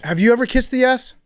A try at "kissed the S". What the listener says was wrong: By the way, it's kissing the S, not kissing ass. It did definitely sound like the first time you said it, kissing ass.